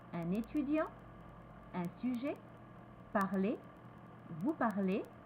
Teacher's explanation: plus relâché que I, more relaxed than I